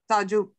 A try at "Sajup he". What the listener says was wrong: Sajup he. Yeah, make sure you say the H. Sajup he.